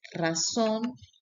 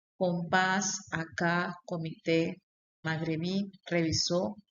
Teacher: la última sílaba es la que tiene mayor fuerza o intensidad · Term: acento prosódico